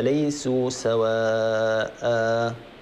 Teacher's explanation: الألف الذي بعد الواو هذا مد متصل، نمده بمقدار أربع حركات، والألف الذي بعد سواء، الألف اللي غير مكتوب هذا، نمده بمقدار حركتين، وهو ألف معوض على تنوين النصب، هكذا ليسوا سواء.